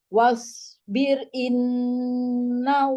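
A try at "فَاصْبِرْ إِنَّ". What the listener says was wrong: Fasmi, Umi, fa itu bukan wow. Fa ya. Fa. Fasbir bukan wasbir. Tadi kebaca wasbir.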